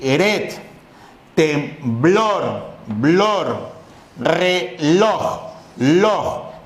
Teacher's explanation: que la sílaba tónica, que el acento está en la última posición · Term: palabras agudas